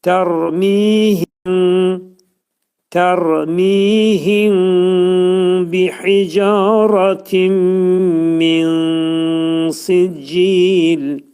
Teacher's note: Tərmihimdə ra hərfi təxvim olacaq, dolu oxunur.